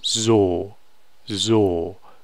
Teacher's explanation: And the O is, English, especially American English, has this thing where, when you make an O sound, you don't make a pure O sound. You do the O, and you make a w, but you don't do that in German.